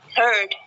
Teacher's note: when saying the word heard, the sound produced is a vowel sound with the jaw position wide open